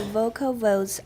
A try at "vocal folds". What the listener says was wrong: Folds, not V. Folds. Vocal folds.